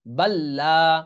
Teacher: এই লাম সাকিন আর উচ্চারণে আসতেছে না, বরং এই বাটা এই লামের সাথে যায় সরাসরি মিলে যায় বাল্লা, বা লাম জবর বাল, লাম আলিফ জবল্লা, বাল্লা, এরকম উচ্চারণ হচ্ছে। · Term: ঈদগাম